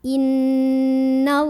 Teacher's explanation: Jadi bacanya tebal ya, pangkal lidah kita angkat. Innallah. Kemudian ada alif lam namanya alif lam syamsiyah karena ada alif lam bertemu huruf syamsiyah yaitu lam. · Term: tafkhim